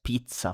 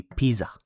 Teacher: Ninth as in the position ninth position um or or day of the month and with the double is non no. So more emphasis on the uh double consonant like pronounce it longer